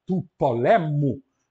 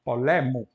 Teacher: Tu polemo, da guerra, tu polemo, ele estava na antepenúltima, porque a última era breve no nominativo e no acusativo. No genitivo, a última passa a ser longa, e então ela passa a ser paroxítona.